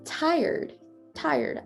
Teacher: the e kind of merges into the r instead of the other way around